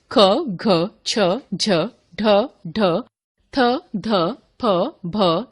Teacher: जिन व्यंजनों के उच्चारण में श्वास वायु अधिक मात्रा में बाहर निकलती है उन्हें महाप्राण व्यंजन कहते हैं।